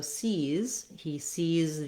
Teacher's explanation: has that tense E and that Z sound, even though it's spelled with letter S.